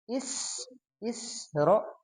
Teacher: sin tipis dulu baru ro tebal begitu ya